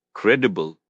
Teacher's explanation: Credible. Stress on the first syllable.